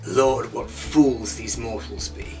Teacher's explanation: Puck at certain times switches to an odd meter called catalectic trochaic tetrameter, which is 4 beats of trochees, but the last one is cut off. It's incomplete.